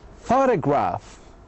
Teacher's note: So we stress the first syllable usually.